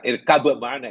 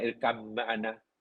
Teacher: Ba tu bukan jadi mim, diidghamkan. Diubah ba jadi mim dalam ikrab, kemudian idgham. Supaya bersatu. · Yang diidghamkan ya, ba itu diidgham tak dibaca ya. Bukan irkab ma'ana, irkam ma'ana.